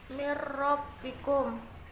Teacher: Cara membacanya, nun sukun dimasukkan ro sambil atau dileburkan sehingga nun sukun tidak terdengar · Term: idhom bilahuna